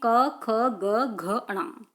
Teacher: क हमेशा कंठ से बोला जाता है। इसमें 5 आते हैं, क ख ग घ ण। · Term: क वर्ग